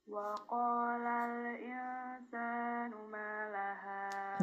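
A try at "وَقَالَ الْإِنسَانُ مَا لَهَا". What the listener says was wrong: Ya, nggak ada hamzahnya. Malaha, nggak ada ha.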